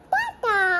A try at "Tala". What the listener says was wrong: Tala. hindi pa niya napopronounce yung L. So, yung Tala niya, Tata.